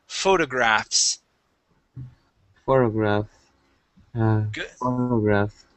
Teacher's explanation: That F does not need to be really strong. Okay, you'll slide right into that S, and it will sound just fine.